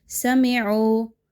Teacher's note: ایک تو عین مجھول ہو گئی، دوسرا میم بھی مجھول ہو گئی